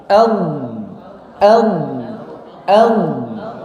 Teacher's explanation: Ujung lidahnya adalah menyentuh gigi seri atau pangkal gigi seri. Tapi hanya tersentuh saja, tidak menekan kuat. Kenapa? Karena kalau yang ditekan gigi depan yang keluarnya adalah huruf dal, bukan huruf dod.